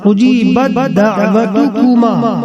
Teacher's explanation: تا مدغم اور دال مدغم فی ہے اور دونوں متحد المخرج ہیں، لہذا ادغام متجانسین ہوگا